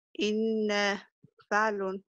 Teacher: النبر على حركة الهمزة من الكلمة وحركة الفاء من الصيغة، وتلون حركة الهمزة باللون الأزرق، ونقول إن فعلون وليست إن فعلون.